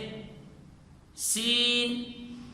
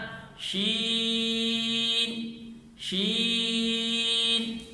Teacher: شین میں پورے منہ میں آواز کو پھیلائیں گے، نرمی سے ادا کریں گے اور زبان کے درمیان سے ادا کریں گے، مد بھی کریں گے، جس طرح شین شین۔ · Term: صفت تفشی